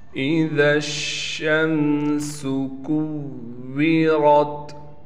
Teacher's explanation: ذال کو ہم نے ڈائریکٹ شین سے ملانا ہے۔ اس شین اور ذال کے درمیان الف بھی ہے، دو الف ہیں، اور اس کے بعد لام بھی ہے۔ · شین پر تشدید ہونے کی وجہ سے تھوڑا ٹھہراؤ کے ساتھ پڑھیں گے،